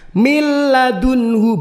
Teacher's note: Nah, kalau idhar artinya jelas, kalau ini artinya melebur. Suara nun tadi, suara nun sukunnya itu melebur masuk ke huruf lamnya. Min ladunhu, bukan min ladunhu tapi mil, langsung masuk ke huruf lamnya. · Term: idgham bila gunnah